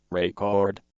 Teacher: when record is a noun, the stress is on the first syllable